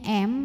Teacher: tanwinnya ini masuk ke mim disertai bunyi dengung jadi bunyinya m dan tahan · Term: Idgham Bighunnah